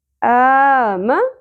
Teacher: ایک الف کے برابر کھینچنا ہے، مد اصلی